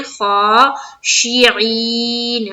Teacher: خا کو منہ بھر کر بولیں گے موٹے حرف میں سے خاشعین. عی میں یا مدہ کریں، نون کے اوپر وقف.